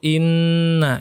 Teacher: Inna ditahan selama dua harokah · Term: hukum ghunnah